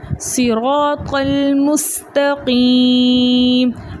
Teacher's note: ٹھیک ہے, قاف کو ہم نے لام کے ساتھ ملا کر پڑھا اور قاف کو ہم نے موٹا پڑھنا ہے, تا کو باریک پڑھنا ہے اور سین کو بھی باریک پڑھنا ہے سیٹی کے ساتھ